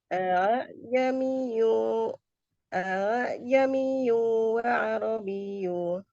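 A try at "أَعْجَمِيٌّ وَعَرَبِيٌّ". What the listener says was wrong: Wa'arabi. Jika wakaf, ini depannya tidak dibaca. Wa'arabi. Karena di sini ada tasydid, jadi agak ditarik sedikit. Wa'arabi. A'jamiyyu wa'arabi.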